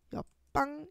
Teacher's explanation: 옆방 이렇게 비읍하고 비읍이 만나면은 뒤에 있는 비읍이 된 소리 되기, 쌍 비읍이 되는 된소리 되기가 일어납니다. 그래서 결과적으로 옆방 이렇게 발음을 해야 돼요.